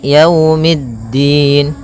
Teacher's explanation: Pada lafal yau di sini ada bacaan lin, yaitu berupa fathah bertemu dengan huruf waw